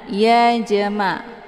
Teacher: Ini dinamakan dengan qalqalah sughra. Cara bacanya, huruf jimnya dipantulkan dengan pantulan ringan. Ya jama, keluar bunyi j.